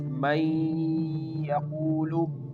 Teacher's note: The first example is may yaqulu. Here we merge the noon into the ya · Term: idgham